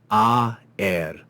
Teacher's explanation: It's two syllables because this symbol tells us that this is actually not to be read as a diphthong, but as two separate vowels. So without that symbol, we would read this as one syllable, aer, aer, aer.